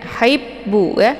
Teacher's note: ini ada tasydid di ba, jadi cara bacanya hanya ditekan sedikit kemudian langsung dileburkan ke dalam huruf ba.